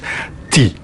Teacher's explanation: my tongue the tip of my tongue is very flexible and I put it basically at its natural place just behind the teeth T that's a very simple sound to make and it's a